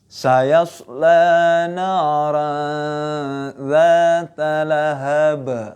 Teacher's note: Pertama harus jelas ya. Tanwinnya dibaca jelas, terus kemudian nun sukun dibaca jelas, cuman disambung ke huruf selanjutnya gitu dengan dengung.